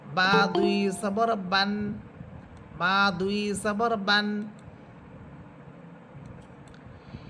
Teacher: বা এটা দুই ঠোঁটের শুকনো অংশ থেকে উচ্চারিত হবে।